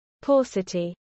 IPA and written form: ˈpɔːsəti (paucity)